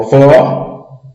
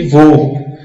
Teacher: Não tem aquele eco quando você pronuncia. Vó, aberto. Vô, fechado. Vô emite um ecozinho quando pronunciamos a palavra. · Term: timbre aberto